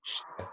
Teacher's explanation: So it's quite a soft t. It's shite. And it's almost an inaudible e in shi.